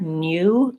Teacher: Sometimes you will hear new with a little bit of a glide in there, new. That's more the British pronunciation.